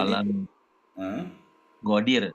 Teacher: Falam nughadir itu tipis karena ada kasroh.